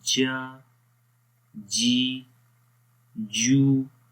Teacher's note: زبان کا درمیان والا حصہ جب تالو کے درمیان والے حصے کے اوپر ٹچ کرے گا تو وہاں پر جیم کی آواز پیدا ہوتی ہے